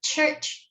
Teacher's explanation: When an affricate sound such as t, as in church, is produced, the tongue is slower in leaving the roof of the mouth than when a stop like t is produced on its own. Hence, affricates are said to be produced with delayed release of air.